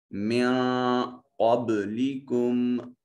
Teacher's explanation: قاف ویسے حرف مستعلیہ ہے، اس کو مفخم ادا کرتے ہیں، موٹا اور پر کر کے پڑھتے ہیں. با ساکن ہے، قلقلہ واجب ہوگا.